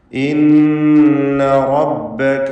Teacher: റ നല്ല പോലെ തടിപ്പിച്ച് സ്വരഭാരത്തോടെ ഉച്ചരിക്കേണ്ടതാണ്. റബ്ബക എന്ന് മലയാളത്തിലെ റ പറഞ്ഞാൽ മതിയാവുകയില്ല. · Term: തഫ്ഖീം